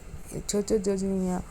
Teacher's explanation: ನಾಲಿಗೆ ಚ, ಚ, ಜ, ಜ, ಞ ಅನ್ನೋದು ನಾಲಿಗೆ ಮೇಲೆ ಭಾಗದಲ್ಲಿ ಅಂಗಳದಲ್ಲಿ ಟಚ್ ಆಗುತ್ತೆ, ಅದಕ್ಕಾಗಿ ಇದನ್ನು ತಾಲುವೆ ಅಕ್ಷರ ಅಂತ ಕರಿತೀವಿ